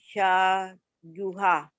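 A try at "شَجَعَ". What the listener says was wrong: Syaju'a. Ini ain. Syaju'a.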